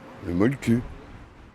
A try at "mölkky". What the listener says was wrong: Plutôt un E qu'un E, mais pas un U. Donc ça fait molke.